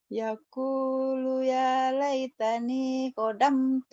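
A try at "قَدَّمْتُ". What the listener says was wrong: Qaddamtu. Bukan kodamtu. Qaddamtu. D-nya 2. Ya, tapi jangan kodam tuh begitu Pak Ari, jangan.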